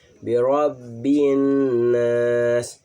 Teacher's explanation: Walaupun ro di sini tidak ada alifnya, tapi kita harus bacanya tafhim tebal ya